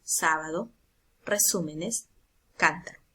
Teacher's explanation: Estas dicen que recaen la mayor fuerza de voz en la antepenúltima sílaba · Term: palabras esdrújulas o proparoxítonas, esdrújulas